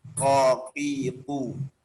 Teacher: jadi jangan ada suara kayak kaf ya, jangan ada hamsnya.